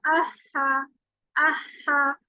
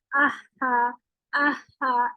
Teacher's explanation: पहले हम्स निकलेगा, इसका हम्स क्या होता है? सांस की आवाज, और फिर उसके बाद हा निकलेगा। और ये मैंने आपको बताया था कि लाइट अदा किया जाता है।